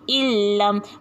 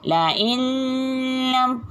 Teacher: Jadi kita masukkan huruf nun mati ke dalam huruf lam tanpa dengung.